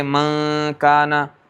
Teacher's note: اخفا میں نون کی آواز جو نکلی ناک میں سے وہ ہو گیا مخرج مقدر میں، ٹھیک ہے۔